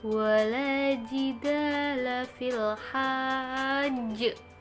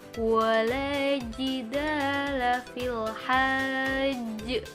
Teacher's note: ada tasydidnya di tanda waqaf, berarti harus ditekan terlebih dahulu dan mantulnya lebih dari yang tidak bertasydid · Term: qalqalah kubro